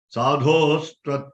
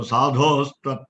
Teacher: So you can easily add sandhi here. So sakara will replace the visarga.